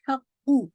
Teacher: हा को बारीक रखिएगा, कौफ को हैवी